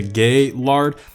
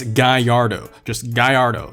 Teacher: makes a Y sound actually. completely throw the L's away.